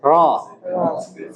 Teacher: Ini huruf ro jangan bergetar terlalu banyak